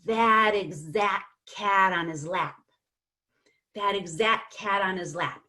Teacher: I take the D at the end of that and I link it to the beginning of exact and it sounds like that exact cat on his lap that